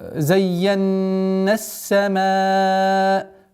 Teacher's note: Здесь у нас долгота в размере 4 огласовок.